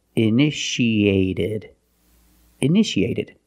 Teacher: In the past, initiated. The second T is between vowels, so we pronounce it like a fast D.